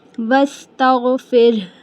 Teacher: ज़ेर है ना? इसलिए र को हम बारीक ही अदा करेंगे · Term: र बारीक